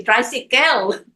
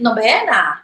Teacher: All the vowels are short, and all vowels are, pronounced. Unlike the American English, only the accented vowel is pronounced.